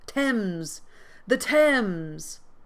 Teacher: It rhymes with gems. This TH sound is silent.